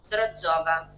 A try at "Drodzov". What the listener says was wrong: No, senza la. Ma come leggi la? Ma non c'è.